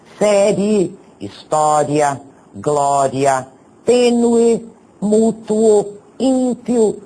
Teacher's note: São duas vogais que nós pronunciamos numa só emissão de voz elas ficam na mesma sílaba vejam os exemplos série história Glória tênue mútuo ímpio e etc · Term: ditongos